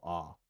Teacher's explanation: occasionally she has that uh father vowel ah where i would expect an all